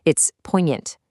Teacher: That G is a total ghost.